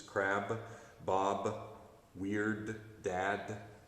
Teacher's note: it's that plosive it's that b sound that comes off the end of the words